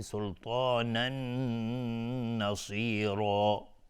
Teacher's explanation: تنوین بعدش نون، ادغام با غنه